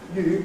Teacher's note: this vowel is not only unrounding; it's becoming front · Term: Unrounding of / uː / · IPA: [ jɪɨ ]